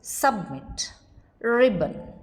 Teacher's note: It is nasally released when it is followed by n.